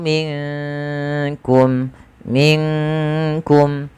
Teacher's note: Kaf makhrajnya dari pangkal lidah kita beririsan dengan langit-langit yang ada di atas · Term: huruf Kaf